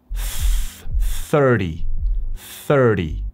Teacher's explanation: 30 se pronuncia con una TH desde la boca, metiendo la lengua por los dientes y haciendo un sonido tipo S.